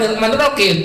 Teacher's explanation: Kalau orang Jawa Rahim kan gitu kan. Jadi kalau Jawa lebih ke kim, kalau orang Sunda lebih ke him.